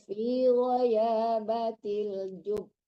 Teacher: Ditahan karena itu ada tasdidnya.